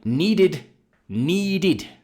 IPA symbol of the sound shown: ɪd